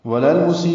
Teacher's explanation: واو ہونٹ کی ناتمام گلائی سے ادا کریں گے